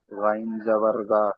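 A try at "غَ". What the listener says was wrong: আচ্ছা গয়নটা টান দিয়ে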